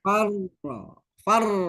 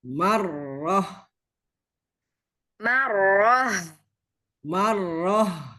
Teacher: Ada rasa berat di sini. pangkal lidahnya harus naik. Jadi, ro juga ditebalkan.